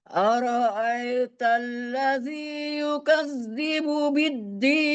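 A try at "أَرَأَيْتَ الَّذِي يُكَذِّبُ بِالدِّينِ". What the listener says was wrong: Hanya di kalimat aro'aita, i-nya sempurna, jangan miring terdengar gitu. I.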